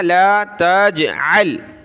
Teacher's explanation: جیم پر قلقلہ کیا